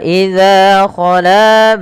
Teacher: Panjangkan huruf za dan la kedua-duanya sama karena ia mad thabi'i.